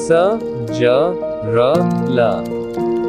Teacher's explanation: वर्त्सीय दांतों के मूल से स, ज, र, ल।